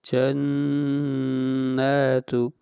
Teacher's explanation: پہلے نون کے اوپر غنہ کریں گے، اس کے بعد نون کو کھینچ کر پڑھیں گے ایک الف کے برابر